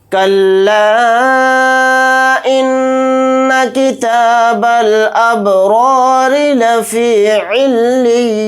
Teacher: را کو ہم باریک پڑھیں گے کیونکہ را کے نیچے زیر آ رہا ہے